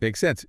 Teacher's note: with a rising intonation at the end